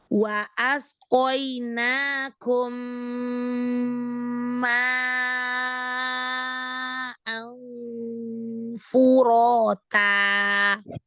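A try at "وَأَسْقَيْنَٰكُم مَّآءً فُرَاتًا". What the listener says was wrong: Ya, hati-hati ya, mat wajib jangan terlalu panjang, 4 sampai 5 ya. Sofir juga ya, punya sifat sofir, rohawah, hames, disempurnakan ya. Wa asqainakum ma'an furata.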